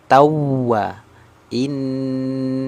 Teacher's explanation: mulut saya huruf dhah sempurna monyongnya innahu hu lu nah ini ada huruf w tasdid berarti dia na nabr berarti suaranya sedikit terangkat